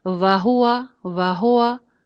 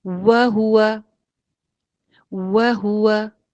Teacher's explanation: پیش بھی گول کرنی ہے میکسیمم اور واو بھی میکسیمم گول کرنا ہے. وہ ہوا، ہونٹ گول ہو کر ادائیگی ہوگی اس کی.